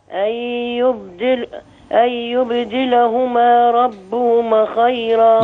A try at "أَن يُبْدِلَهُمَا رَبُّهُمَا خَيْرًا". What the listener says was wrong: أخلي بالي في ألف بتاكل معايا. أن يبدلهما ربهما خيرا،